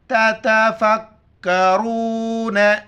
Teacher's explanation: را کو موٹا کر کے واو کے ساتھ ملائیں گے